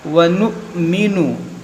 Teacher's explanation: یہاں پر دیکھیں حمزہ ساکنہ ہے اور اس کو جھٹکا دے کر پڑھا جاتا ہے